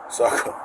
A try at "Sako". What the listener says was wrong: Sounds like you're saying a T.